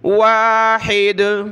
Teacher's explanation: जब रुकेंगे वक़फ़ करेंगे तो कलकला होगा दाल पर